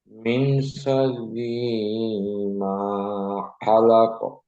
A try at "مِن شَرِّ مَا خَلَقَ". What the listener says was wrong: মিন শাররি একটু টান হয়ে গেছে, আমি টান দেবো না। মিন শাররি মা খালাক।